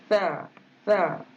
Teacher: Huruf ta misluha. Huruf ta hujung lidah kena letak pada hujung gigi atas